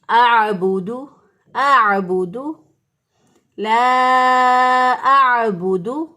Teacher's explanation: عین جو ہے یہ وسط حلق سے ادا ہوتا ہے. لہٰذا اس کو اقصی حلق سے اور اس کو وسط حلق سے، حلق کے درمیان سے ادا کریں گے تو دونوں کی آواز واضح ہوگی. · حمزہ جو ہے اس کو اقصی حلق سے ادا کریں گے. حمزہ اور ہا یعنی سینے کی طرف جو گلے کا حصہ ہوتا ہے وہاں سے یہ ادا ہوتا ہے، اور عین جو ہے یہ وسط حلق سے ادا ہوتا ہے.